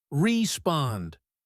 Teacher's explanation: The word respond has stress on the second syllable.